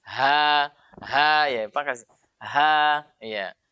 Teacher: Dan keluarnya di pangkal tenggorokan bukan di dada.